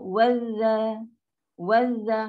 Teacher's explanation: Hamzah wasal pun tak pakai. Mana ada? Dia dah hilang dah. Dan lam pun tak ada bunyi.